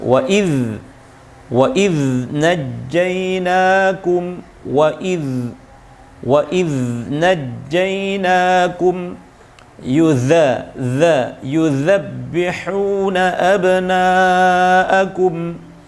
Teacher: khusus rikhwah itu huruf dzal itu harus ditahan nafasnya, tapi suaranya yang dialirkan